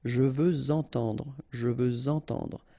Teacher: Even if we've got this X at the end, well, with the liaison it will sound like Z.